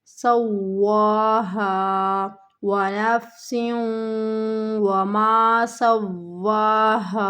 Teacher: ادغام کے معنی ہے ملانا، تو ہمیں سین کو واو کے ساتھ ملاتے ہوئے ادغام کرنا ہے غنے کے ساتھ، یعنی کہ تھوڑی سی بن بناہٹ سی پیدا ہوگی۔ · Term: ادغام مع غنہ